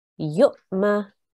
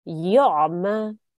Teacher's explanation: it's a soft jerk when there is a sakoon on the Hamza